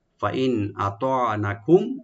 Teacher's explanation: আর হুম এখানে মিম সাকিন যেখানে এজাহার করবো, একটু বেশি করে করবো, ক্লিয়ার করে।